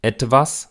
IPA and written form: ˈɛdvas (etwas)